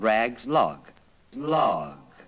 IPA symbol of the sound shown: lɑt